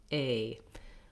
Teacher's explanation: Then I have my K syllable, K sound, and the A is a diphthong in American English, which means it glides between a tense A and a more lax I sound, A.